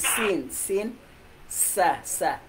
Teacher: Yung dulo ng dila dito sa kalatagan ng mga ngiping harapan sa dakong ibaba.